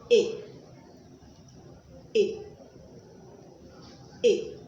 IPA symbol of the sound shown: I